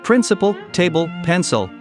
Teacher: for words like principle table pencil the l produces a sound closer to a very long o